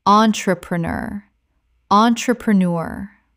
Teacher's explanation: Five syllables with the stress on the final syllable.